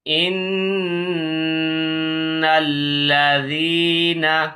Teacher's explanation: یہاں پہ ہم غنہ کریں گے، ناک میں آواز لے جائیں گے